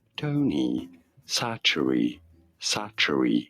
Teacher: You don't want to stress on the first syllable, and yes, it's a sa sound, not a ch sound.